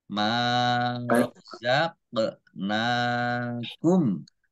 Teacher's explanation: qaf sukun ini bacaan qalqalah, dibaca memantul, ditampakkan pantulannya. Marzaqnakum, nun fathah berdiri matobi'i, panjang 2 harokat.